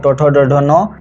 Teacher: मूर्धा और जीभ की सहायता से जिन वर्णों का उच्चारण होता है उसे हम लोग मूर्धन्य वर्ण कहते हैं